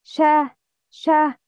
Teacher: running of breath when pronouncing the letter, because the letter is weak, not strong. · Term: hams